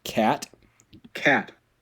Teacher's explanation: There's a low front unrounded lax vowel, a. And there's a voiceless coronal stop, t. · There's a voiceless velar stop, k.